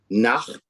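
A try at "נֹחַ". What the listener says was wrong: Okay, close. You're missing a vowel here though.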